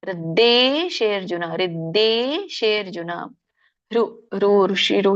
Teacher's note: ಧೇ ಅಲ್ಲ ಯಾಕಂದ್ರೆ ಮಹಾಪ್ರಾಣ ಇಲ್ಲ